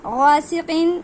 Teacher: غین کو حلق سے پڑھیے، ادنائے حلق سے۔